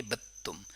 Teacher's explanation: با کو تا کے ساتھ کنیکٹ کر لیں گے اور اس میں بھی دال کا ادغام ہو گیا